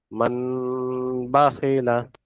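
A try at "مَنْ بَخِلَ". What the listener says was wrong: মান হবে না, মাম। মাম বাখিলা। মাম বাখিলা। মিম মিম জাবার মাম।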